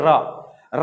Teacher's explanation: जीभ में एक कंपन उत्पन्न होता है, एक वाइब्रेशन पैदा होता है, इसलिए इसको लुंठित या प्रकंपी व्यंजन कहा गया है।